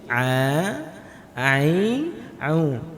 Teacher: Huruf ain itu ketika diucap, lidah kita seolah-olah agak mundur sedikit.